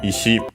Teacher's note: accent on the last syllable, by the way, just like Iwa, also accent on the last syllable